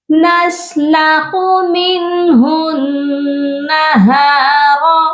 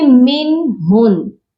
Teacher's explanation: جو فرسٹ والا نون ہے نون ساکن ہے، یہاں پر صرف اظہار حلقی ہوگا کیونکہ اس کے آگے ہا ہے جو کہ حروف حلقی ہے، اور اس ہا کو نون مشدد کے ساتھ جب ہم ملائیں گے تو نون مشدد پر غنہ کریں گے کیونکہ نون مشدد پر غنہ لازمی کیا جاتا ہے۔